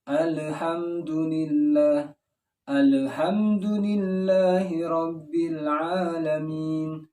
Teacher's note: Itu pantulan dari lidah kita. Ketika lidah kita menempel di makhraj lam, al, belum ada pantulan. Tapi ketika kita menariknya, itulah ada pantulan di situ.